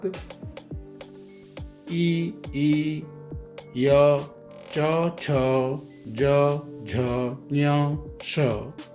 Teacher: तालु स्थानीय वर्ण, इसका सूत्र है इचु यशानाम तालु। अर्थात ई, य, च, छ, ज, झ, ञ, श तालु की सहायता से बोले जाते हैं